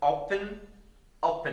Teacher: the stress is on oh not the e